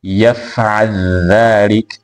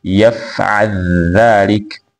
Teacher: amesoma kwa idgham herufi ya al-lam kwenda katika herufi ya adh-dhal katika tamshi la yaf'al dhalik.